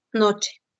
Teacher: Ese es un sonido palatal, o sea, sucede en el paladar.